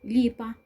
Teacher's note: Ударный звук в первом слоге и, а гласный звук во втором слоге па, безударный звук.